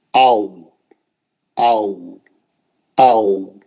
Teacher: वाव में होठ नहीं मिलते, क्योंकि बीच में गोल हमको वो रखना है, सुराख रखना है और मुंह से दूर लेके जाना है